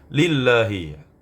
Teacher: huruf lafaz Allah pada kalimat ini itu dibaca tarqiq tipis karena sebelumnya huruf berharakat kasrah